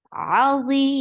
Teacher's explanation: And you are making it 4 counts long, because this is mad arid lisakun. It is long, it is being stretched.